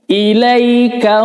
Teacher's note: ilai fathah diikuti sukun, dibaca ai